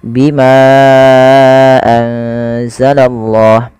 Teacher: Ya, di sini adanya ma yang bertemu dengan hamzah setelahnya dan hamzah tersebut pada lain kata, maka kita namakan dengan mad jaiz munfasil. Untuk mad jaiz munfasil sendiri panjangnya adalah 4 harokat atau 5 harokat.